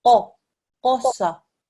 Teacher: This is a qaf. I've highlighted it because it's a thick and heavy sound. So when you read it, make sure you pronounce it with a thick and heavy sound, yeah?